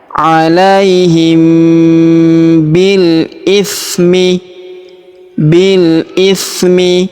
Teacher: Huruf bi langsung sambung masuk ke huruf lam yang sukun